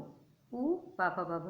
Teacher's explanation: इनका उच्चारण स्थान ओष्ठ होते हैं, ओष्ठ दो होते हैं, इसलिए द्विवचन का प्रयोग यहाँ पर हुआ है।